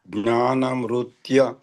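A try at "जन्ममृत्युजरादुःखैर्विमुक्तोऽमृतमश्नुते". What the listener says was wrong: Devotees, this is Janma, okay? Not Jnana. Janma Mrityu Jara Dukkha.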